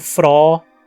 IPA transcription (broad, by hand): frɔː